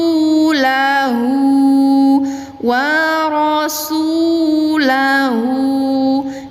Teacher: dhammah tegak dibaca panjang 2 harokat